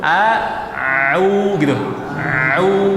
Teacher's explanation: Ngalir dulu ain baru domah gitu ya. Ngalir ain dulu baru domah